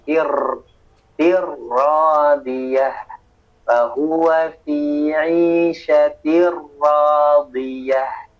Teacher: Ra-nya jangan terlalu banyak getaran.